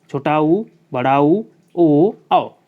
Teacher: वृत्ताकार में इन स्वरों के उच्चारण में ओठों का आकार गोल हो जाता है, जैसे आ ऊ ओ औ।